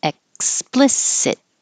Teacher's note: your tongue goes to the K position explicit and hold the final T so you don't release · hold the final T so you don't release a T